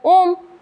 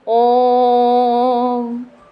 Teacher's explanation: हरस्व से 3 गुना समय ज्यादा लगेगा, उसे कहते हैं प्लुत